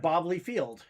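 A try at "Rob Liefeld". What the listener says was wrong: I love how you pronounce it. It wasn't even [laughter] Leefield. It was Leaf Field.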